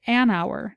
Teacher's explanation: we find a similar Phenomenon with the word our for example it starts with a consonant H but the word starts with a vowel sound ow therefore we say an hour not a hour this being